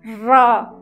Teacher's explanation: और आप देखिए र, ऊपर जीभ उठती है और वहाँ क्या होता है, जो अग्रभाग है 2-3 बार निश्चित रूप से जीभ का अग्रभाग हिलता है। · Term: लुंठित व्यंजन